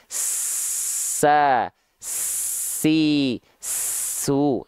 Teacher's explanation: ketika kita lafalkan kan dia mengalir nafasnya. Tuh, nafasnya mengalir dengan deras gitu, nafasnya mengalir. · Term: hams